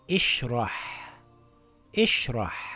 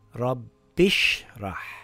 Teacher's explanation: if I read the words together, we drop the Hamzatul Wasl and it reads rabbishrah.